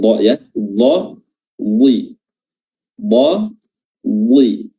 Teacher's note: Dan huruf dhad juga memiliki sifat isti'la, sifat yang tebal, ya, dha. Dan di sini dia berharakat kasrah dan ketebalannya tetap nampak, ya.